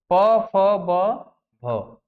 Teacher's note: इस सबका उच्चारण हम लोग ओष्ठ से करते हैं। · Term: प वर्ग